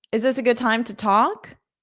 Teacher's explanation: Is this a good time to talk? Is so hold up that S to link to the A